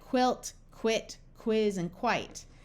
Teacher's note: U takes on the sound of W, after the letter Q, in words like quilt, quit, quiz, and quite.